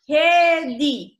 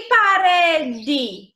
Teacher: Na fala, a vogal E pode soar como I